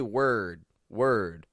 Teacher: we're using a w then we're using a schw r and then a stop d